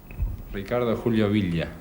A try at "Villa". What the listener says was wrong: Villa. Villa. Not with a V, but a B. Villa.